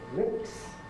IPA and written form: lɪps (lips)